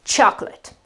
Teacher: The accent with this apostrophe here shows us that the syllable that basically carries the accent is the first syllable, so the O that becomes a sort of an so it is chocolate, chocolate. This last part here is schwa and t, and there is no accent.